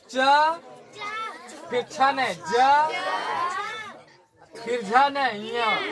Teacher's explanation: पहला अक्षर, तीसरा अक्षर, पांचवा अक्षर अल्प प्राण हो रहा है ना, आइने दूसरा और चौथा महाप्राण हो रहा है ना।